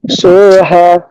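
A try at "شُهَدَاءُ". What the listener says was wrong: টান হবে না, সুহা। দাল আলিফ জবর দা, সুহাদা, হামজা পেশ উ, সুহাদা উ, সুহাদা উ, হামজাটা একটু শক্ত করার চেষ্টা করব। হা পেশ হু,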